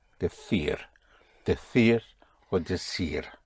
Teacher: In Madrid you will say decir. Yes, for the TH sound.